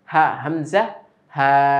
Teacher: হলকের শুরু হতে উচ্চারিত হয় 2টি হরফ, হামজা, হা।